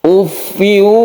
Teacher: Ufiu kita panjangkan ya, karena dia itu idgham bi gunnah, masuk ke huruf waw tanwinnya ini. Ufiu, ketika fiu itu kita panjangkan, itulah yang disebut dengan bi gunnah.